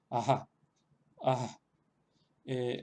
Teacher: es como una especie de H aspirada, como la H en inglés, o una versión más suave de la J española, pero también provoca como una especie de alargamiento de la vocal que le precede. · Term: bisarga